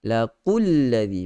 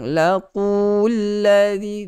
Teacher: Dua harakat tidak dipanjangkan, masuk terus dalam lam yang ada tanda syaddah